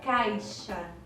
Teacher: Ela é imperceptível às vezes. Numa palavra do tipo caixa, quase não é pronunciado a letra I. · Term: semivogal